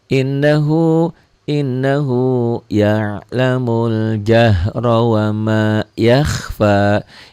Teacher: dibaca nyamber dan double, dengung ke hidung, dan ada panjangnya 1 alif sampai 1 alif setengah atau 2 sampai 3 harokat. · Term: gunnah